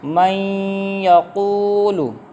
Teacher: اب ہم نے یہاں پر غنہ کیا، کیوں؟ کیونکہ نون ساکن کے بعد یا آ رہا ہے تو یہاں پر ادغام ہوگا، لہذا غنہ کریں گے۔